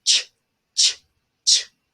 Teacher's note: because of the stop, you can't hold it. You can hold the sh part, but you can't hold the stop. You would have to go ch, ch, ch. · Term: affricate